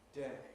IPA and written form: deɪ (day)